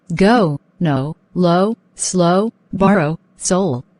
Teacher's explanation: the transition is smooth and the way it is pronounced is like a rise at the end